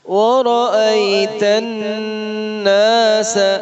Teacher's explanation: ورا میں را موٹا ہے، آئی میں حرف لین ہے، الناس پہ غنہ ہے، سین کو لمبا نہیں کرنا